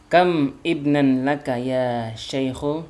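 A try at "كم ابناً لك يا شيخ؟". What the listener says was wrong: Iya, disambung aja kami benan gitu.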